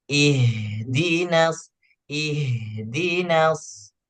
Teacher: kuatkan sedikit apa namanya huruf H-nya, desis huruf H-nya